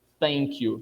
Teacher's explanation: TH encostando a língua embaixo do dente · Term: interdental